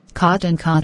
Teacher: cot and cod are different sounds in british english in american english they are identical